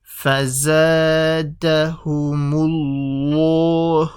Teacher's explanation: So Allah, I'm going to put an F over here. So Allah will be full mouth because of the dhamma before it.